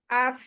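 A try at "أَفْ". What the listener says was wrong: Ya, nanti jangan berhenti gitu. Af.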